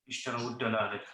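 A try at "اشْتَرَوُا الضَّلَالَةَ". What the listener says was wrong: ud. You said ud. So you read here a dhamma here. So when there is a haraka, so in this case, the haraka on the ra before the waw has fatha.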